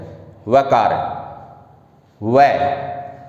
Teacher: वकार का उच्चारण स्थान क्या है, दंत और ओष्ठ है